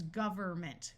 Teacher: notice that in this word the n Sound usually completely disappears and rather than saying government it becomes government with the N